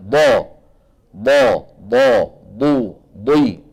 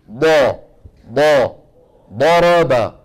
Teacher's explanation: الضاد كما ذكر ائمتنا من حافة اللسان اليمنى او اليسرى او منهما معا، مع ما يحاذيه من الجدار الداخلي او الصفحة الداخلية للأضراس العليا